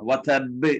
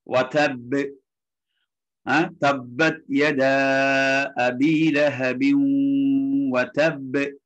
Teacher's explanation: வதப் ஏன்னா அது கடைசியில வருது. இப்போ கல்கலா கொஞ்சம் கூடுதலா இருக்கும். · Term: கல்கலத்துல் குப்ரா